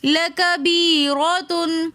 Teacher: لَكَبِيرَةً میں یا ساکن اور اس سے پہلے زیر تو یا مدہ ہونے کی وجہ سے ہم نے لَكَبِيرَةً ایک الف کی مقدار کھینچ کر پڑھا. را کے اوپر زبر ہے تو اسی وجہ سے ہم را کو موٹا کر کے پڑھیں گے